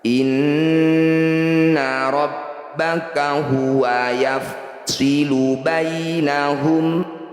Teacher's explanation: Inna, nun bertasydid disebut bacaan gunnah musyaddadah. Bunyi nun dengungkan 2 harokat atau 2 ketukan.